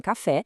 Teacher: A gente tem a oxítona, com a força na última sílaba